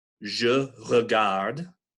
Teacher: this version of the letter E is known to linguists as the schwa. It's like a sort of a neutral vowel sound